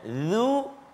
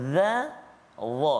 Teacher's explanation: Tetapi dia sifat dia berbeza. Sifat dia tebal, dia terangkat lidah kita, dia isti'la, kan? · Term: huruf dha